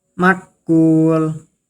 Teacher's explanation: Ada mad thobi'i pada huruf wau dibaca dua harakat jika berhenti di akhir ayat menjadi mad arid lukun.